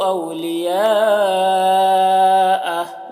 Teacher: لیا کے اوپر جو مد ہے اس مد کو مد متصل کہتے ہیں، اسے 3-4 الف کے برابر کھینچ کر پڑھتے ہیں